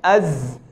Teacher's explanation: اب زا جو ہے وہ اس طرح جدا ہوتی ہے باقی دو حروف سے کہ زا کی آواز میں تھوڑا سا تھر تھراہٹ ہوتی ہے جی، اور سین اور صاد میں ایسا نہیں ہوتا۔